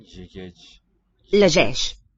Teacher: Thoroughly palatalize this word. All the vowels and the consonants are palatal.